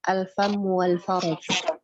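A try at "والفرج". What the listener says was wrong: Nah, wal farj. Bukan faraj ya. Kalau ra pakai ra itu berharakat fathah itu maknanya beda.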